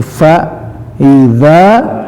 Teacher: Nah, di sini fa idza, za-nya panjang, za-nya digigit lidahnya karena sifat za